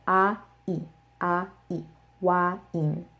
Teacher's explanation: this diphthong does not exist in Korean so they have to say in two separate sounds